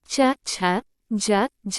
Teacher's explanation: जिन व्यंजन के उच्चारण में वायु पहले किसी मुख अवयव से स्पर्श करती है। फिर रगड़ खाते हुए बाहर निकलती है, उन्हें स्पर्श संघर्षी व्यंजन कहते हैं।